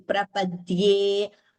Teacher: There is a Dvitvam. D is doubling. Prapadye. A is always a Dirgha in Sanskrit.